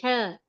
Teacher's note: حلق کے درمیانی یعنی بیچ کے حصے سے بڑی ہا ادا ہوتی ہے۔ ہاں، اسے ادا کرتے وقت آپ کے منہ سے ہوا باہر آتی ہے، باہر کی طرف آتی ہے، ہلکی سی، بہت زیادہ نہیں آتی۔ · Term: بڑی ح